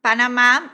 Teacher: termina com uma vogal né então a última sílaba é a sílaba tônica então é uma palavra aguda